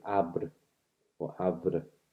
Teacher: You've got voicing all the way through